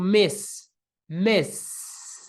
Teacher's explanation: esse verbo com esse s no final não faz com que as cordas vocais vibrem